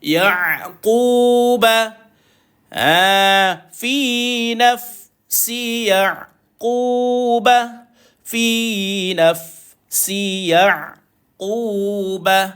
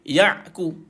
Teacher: Mati ain dia ada sifat tawassut.